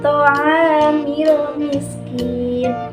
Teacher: huruf ain bertemu dengan huruf alif. Nah, dibacanya panjang 2 harokat. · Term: mad tabi'i